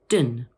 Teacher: in the second part of the word, the O is pronounced as a schwa, like this, dun.